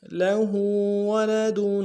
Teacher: لہو میں ہا کے اوپر الٹا پیش ایک امداد میں کھینچیں گے